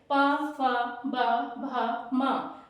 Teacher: और उसके बाद पवर्ग पवर्ग में जब भी हम उच्चारण स्थान करते हैं प फ ब भ म दोनों होठ आपस में स्पर्श होते हैं · दोनों होंठ आपस में स्पर्श होते हैं, इसलिए इनका उच्चारण स्थान था पवर्ग।